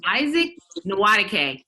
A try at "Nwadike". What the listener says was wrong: No. It's Isaac Nwadike. Nwadike. The N is silent.